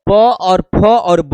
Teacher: प वर्ग ओठ में आता है